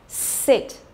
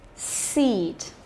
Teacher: Cứ mỗi lần mà cô phát âm cái âm y dài thì miệng của cô phải kéo căng ra